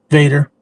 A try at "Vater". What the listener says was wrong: It's actually German. It's Vater, not Vader.